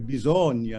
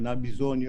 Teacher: they've got an open O there